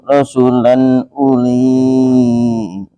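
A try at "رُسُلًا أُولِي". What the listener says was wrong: Pendek ya? Pendek.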